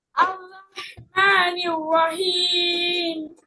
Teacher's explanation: হাটার উচ্চারণটা ক্লিয়ার করতে হবে, হ্যাঁ, হলকের মাঝখান থেকে। আর রহমানির রহিম। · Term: বড় হা